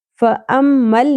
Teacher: فَأَمَّلْ، میم کے اوپر تشدید ہے، میم مشدد ہے، غنہ ہوگا، یعنی میم کی آواز کو ہم ناک میں ٹھہرائیں گے